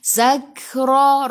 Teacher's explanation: Ra baca dengan tebal. Ra baris atas tafkhim.